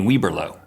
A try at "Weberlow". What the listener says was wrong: I don't think there's an R. I think it's Weberlow. Weberlow. It's 3 syllables. The most important thing is that you get 3 different syllables out of that.